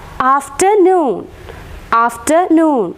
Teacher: both the syllables are stressed after as well as noon is stressed afternoon after and noon is stressed B ambered here also it